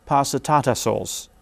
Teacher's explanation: you hear the pitch movement going down but within this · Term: melody